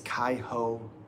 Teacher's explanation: R sound like H's in Portuguese.